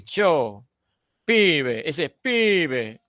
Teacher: esa marca, esa cadencia, esa intensidad, esa duración en la I, pibe, eso es propio del argentino